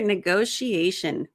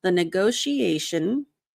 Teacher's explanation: So here, negotiation, another great example of when the T sounds like an SH